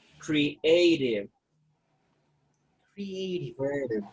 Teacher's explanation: So you have the stress on the second syllable.